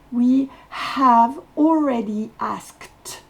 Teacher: Le E ne se prononce pas à la fin et le D va se prononcer T.